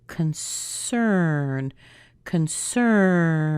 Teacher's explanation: take that o sound out put a schwa because it's unstressed